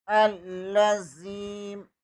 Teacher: लाम बरीक है, या इसे पुर नहीं पढ़ेंगे। ज़ाल ज़ेर के बाद या मद्दा है, इसे एक लफ़ के बराबर खींच कर पढ़ेंगे। · अलिफ ज़बर को लाम के साथ मिलाएंगे, लाम मुशद्दद है, इसे 2 बार पढ़ेंगे। लाम बरीक है, या इसे पुर नहीं पढ़ेंगे।